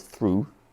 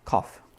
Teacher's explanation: one is through, the vowel sounds like oo, and the other one ends in off, cough